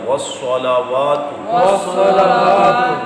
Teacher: صاد موٹا پڑھنا ہے مستعلیہ